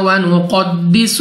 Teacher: قاف مستعلی میں سے ہے، موٹا پڑھیں گے یعنی منہ اور آواز کو کھول کر، اور سین کو سیٹی والی آواز کے ساتھ پڑھیں گے.